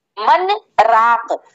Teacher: نون میں یہاں پر غنہ آپ کا ظاہر نہیں ہوگا بلکہ نون کو صاف صاف پڑھا جائے گا، من راق، اس طرح پڑھیں گے۔ من پہ رک جائیں گے 2-3 سیکنڈ کے لیے بغیر سانس توڑے اور پھر پڑھیں گے راق۔ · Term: سکتہ